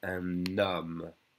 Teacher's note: So the un, usually you don't hear the N, but if it's followed by a vowel sound, and the H is silent, it's followed by a vowel sound, we connect the N to the O